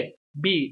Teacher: Los españoles solemos hacer la B, B, bilabial, con los dos labios. Si no es así, es TV, con el diente al labio, ¿vale?